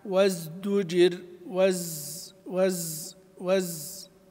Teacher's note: فهو مجهور فيه صفير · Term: حرف الزاي